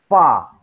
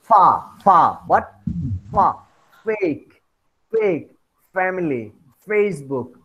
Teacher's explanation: labiodental is the lower lip approaches or touches the upper teeth, as in the sounds fa.